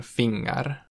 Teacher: Kirjainyhdistelmä <ng> lausutaan normaalisti kuten suomessakin ilman äännettä /g/